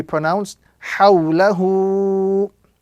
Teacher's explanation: So the waw sakin, before which is the vowel fatha, gives us the sound aw, and it is known as waw lean, one of the soft letters which must be pronounced gently without any exaggeration or prolongation